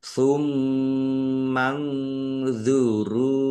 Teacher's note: Nun sukun bertemu dengan huruf dha, bacaan ikhfa, dibaca samar-samar.